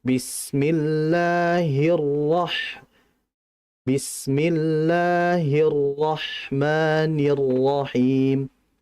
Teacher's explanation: Jangan terlalu cepat. Ra itu punya sifat namanya tawasud, dan ra dalam kondisi itu bertasydid. Jadi ditahan